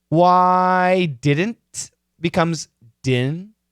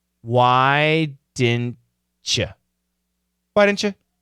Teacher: The N can cancel the D.